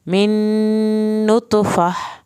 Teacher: ख़लक़ह मिन अय्यि शैइन ख़लक़ह मिन नुतफ़ह, यहाँ पर नून की शत पे देर लगेगी और नुत तो पे कलकला करना है। यहाँ पे फ़ह आखिर में हा की आवाज़ निकालनी है।